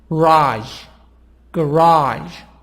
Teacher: stress on part number two the sound is higher on the second part on the second syllable